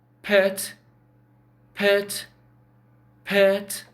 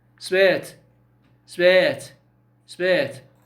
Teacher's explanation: look at me when I say pet pet pet there's aspiration but when I say s spit spit no aspiration